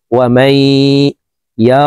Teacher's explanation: নুন সাকিনের পর ইদগামে বা গুন্নার হরফ ইয়া আসছে এই কারণে এই মিম তাসদীদ ওয়ালা ইয়ার সাথে গুন্নার সহিত মিলাইয়া পড়ব মাঝখানে জজমালা নুন বাদ পড়ে যাবে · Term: ইদগামে বা গুন্নাহ